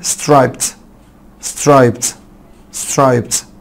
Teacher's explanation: بعد البا ساوند الاي دي بتنطق تا